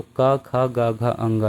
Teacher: का, चा, टा, ता, पा, इन 5 वर्ग की बात करें तो का, खा, गा, घा, अंगा, यानी का वर्ग में कंठ से बोला जाता है और ये का, खा, गा, घा और अंगा होता है।